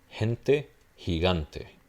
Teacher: aspirate, similar to the English H, that's all it is.